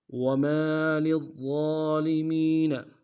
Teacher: ضا کو موٹا ادا کریں گے، ضا کے اوپر تشدید زور دیں گے